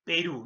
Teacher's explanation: la mayor fuerza de voz va a estar en la última sílaba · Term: aguda